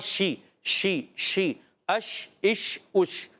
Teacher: تفشی, یعنی منہ میں آواز کا پھیل جانا